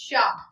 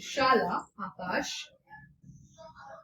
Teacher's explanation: सबसे पहले जो श है शीटी वाला तो ये तालव्य से बोला जाता है। हमारा जो ऊपर जीभ के ऊपर का हिस्सा होता है तालु उसे हम तालव्य कहते हैं।